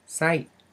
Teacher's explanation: we have that little squiggly symbol on top of the word, which is just a tone marker. It's a falling tone.